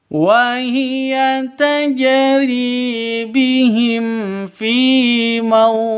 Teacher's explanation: Terus yang terakhir ini jim. Jimnya mati. Kenapa? Karena waqaf, maka berlaku hukum qalqalah. Karena di akhir, maka qalqalah kubro.